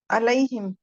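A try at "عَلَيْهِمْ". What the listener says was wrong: आइन को निकाले, आइन को। नहीं, अलैहिम नहीं। आपकी एफर्ट नहीं हो रही जुबान की। जुबान को पीछे की तरफ प्रेस करें। आ।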